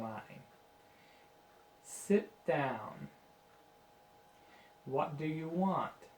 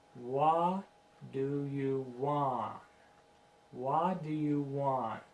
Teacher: you make sure you say that last t make it very clear